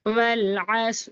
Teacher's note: دیکھیں یہاں پر واو کو لام سے ملا کر پڑھنا ہے نا، عین کو صاد سے ملائیں گے، یہاں لام کے بعد الف اور لام کے بعد حروف قمری کا عین آ رہا ہے، اس لیے یہاں پر لام ظاہر کر کے پڑھا جائے گا، عین کو صاد سے ملا لیں گے اور را کو باریک اور جلد پڑھیں گے، والعصر، اور صاد حروف مستعلیہ پورا اور موٹا بھی۔